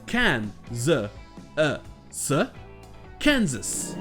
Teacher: Ici, c'est la première syllabe qui est accentuée, le K-A-N. Donc ça donnera can.